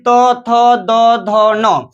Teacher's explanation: पूरा तो वर्ग का उच्चारण स्थान जो होगा क्या होगा? दंत होगा।